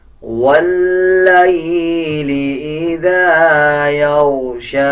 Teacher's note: اسی طرح آگے دیکھیں، یا کے اوپر جزم ہے، جزم کا مطلب ہوتا ہے کہ پچھلے الفاظ کے ساتھ ملا کے پڑھا جائے۔ اب جیسے یا کے اوپر جزم آ رہا ہے تو یا کو لام کے ساتھ ملا کے پڑھا جائے گا